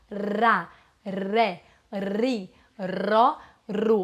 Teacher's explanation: você vibra a ponta da língua isso é muito importante é isso que difere o r do l a vibração da ponta da língua